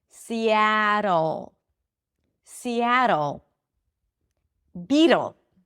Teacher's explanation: if you hear the dark L, think of it as if there is an O sound.